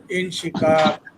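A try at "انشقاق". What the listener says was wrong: হ্যাঁ, একটু টান দিব। ইনশিকাক।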